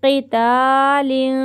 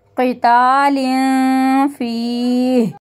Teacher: यहाँ पे दो ज़ेर की तनवीन है, फा आ रहा है, गुन्ना करेंगे यहाँ पे। क़ितालिन फी, या मद्दा को खींचते हुए रुकेंगे।